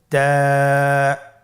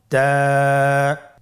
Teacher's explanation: তা হরফটি বারিক হরফ এবং এক আলিফ টেনে পড়তে হবে